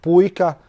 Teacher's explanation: Latvian language has stress on the first syllable, just like Finnish and Estonian does